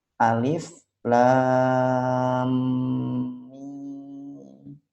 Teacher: mim sukun ketemu mim. Bacaan itu hukumnya idgham mimi. Nah, itu ditahan 2 harokat. Jadi bacanya alif lam mim.